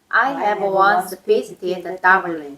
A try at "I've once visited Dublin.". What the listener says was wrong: 근데 이건 이제 우리가 이렇게 하는 거는 이제 문법을 익히기 위해서 이렇게 했고 발음할 때는 I have로 하지 않아요. I've once. I've 하고 once를 분리시키지 않거든. 그러니까 똑같은 말로 들리잖아요. 한 단어로 들리잖아요.